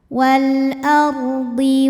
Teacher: ro sukun didahului fathah dibacanya secara tafkhim tebal